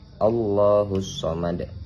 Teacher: Sebenarnya bukan qalqalah karena dalnya di sini tidak disukun tapi sebab kita wakafkan karena akhir ayat maka menjadi qalqalah kubra. Cara membacanya itu dengan pantulan berat.